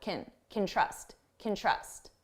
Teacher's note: you hear trust more because it's the main verb, and can, which sounds like kin, is very short. Can trust, can trust.